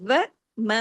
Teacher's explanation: اور آگے دیکھیے و دونوں باریک حروف ہیں، وا کے ساتھ الف نہیں ہے، ماں کے ساتھ الف ہے. الف والا لفظ 2 حرکات کھینچتا ہے، وا 1 حرکت